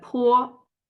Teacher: and the asper initial means when we are speaking this sound there's a strong air flow comes out of our mouth